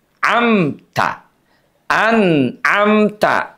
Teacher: Jangan sampai izharnya diputus bunyinya kayak sakta an amta. Bukan begitu ya.